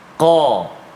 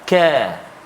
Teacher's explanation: qaf dia ada sifat tebal dia, qa. Kaf dia tak tebal, ka. Beza bunyi, kan, qa ka, kan.